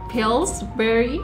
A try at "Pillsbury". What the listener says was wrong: Yeah, say it faster. That's one word.